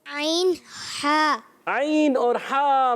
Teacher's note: حلق کے درمیان والے حصے سے عین اور ہا